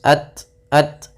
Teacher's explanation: Kemudian pelafal ta sukun, dia memiliki sifat syiddah dan sifat hamas, yaitu yang pertama suara ditahan, ya, kemudian alirkan nafas